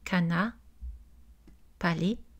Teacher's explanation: Dans le créole haïtien, par rapport au français en France, on a la disparition de la consonne R en fin de syllabe. Donc, cana, palais.